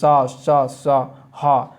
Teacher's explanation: उच्चारण के समय वायु घर्षण करती हुई निर्गमित होती है। जैसे आप बोलेंगे सा सा सा हा, ठीक है, वायु जो है, हवा जो है घर्षण करती हुई निकल रही है मुँह से, तो इसी जिससे उष्मा उत्पन्न होती है, इसलिए इसे ऊष्म संघर्षी व्यंजन कहा जाता है।